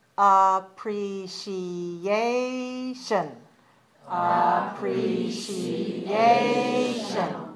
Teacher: appreciation five syllables stress the fourth one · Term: stress the 4th one